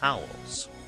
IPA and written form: ˈhaʊəlz (Howells)